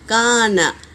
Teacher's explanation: الف مدہ ہے تو ایک الف کے مقدار کھینچیں گے